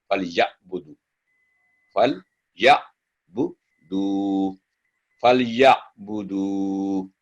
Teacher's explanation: यहाँ आइन सॉफ्ट इसका साउंड है, हमजा न बने, यानी या न बने, आमतौर पे गलती होती है.